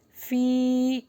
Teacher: اس کو لانگ کر کے پڑھیں گے کیونکہ یہاں پہ یائے مدہ ہے